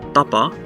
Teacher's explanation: at the beginning of the word you can see that it's unaspirated